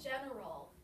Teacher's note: The last syllable, the A-L, makes the schwa sound.